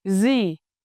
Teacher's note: In Northern dialect, gì is pronounced with a clear z sound